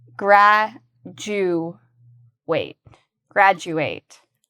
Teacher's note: And I want you to pay careful attention to the pronunciation because the du actually has a ju sound